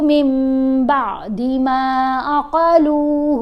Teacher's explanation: یہاں با کے اوپر زبر ہے, ساتھ عین ہے, تو با کو ان سے ملانا ہے بعدی. ما میم کو تھوڑا سا لمبا کر کے پڑھا, عقلوہ لام کو کھینچ کر پڑھا